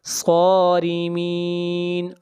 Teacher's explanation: تم صارمین، میم کو ظاہر کر کے پڑھیں گے، اظہار ہوگا۔ صارمین، صاد کو موٹا پڑھیں گے، صاد حروف مستعلیہ میں سے ہے، اور را کو باریک پڑھیں گے، اور یہاں پر مد عارض وقفی ہوگی۔